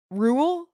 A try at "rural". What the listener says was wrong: it sounds like you're saying r-u-l-e rule